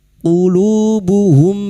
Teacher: mim sukun bertemu wau idhar syafawi mim sukun dibaca jelas tanpa mendengung